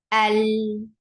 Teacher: जब लाम को बोला जाता है, तो कोई फ्लो ऑफ ब्रेथ नहीं होगी। अल, clear, without any flow of breath, you will say rest of the letters which are part of jar। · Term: जहर